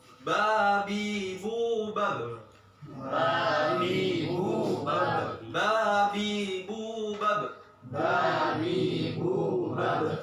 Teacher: Bertemunya antara kedua bibir dalam keadaan tertutup. Bener-bener tertutup. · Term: Huruf ba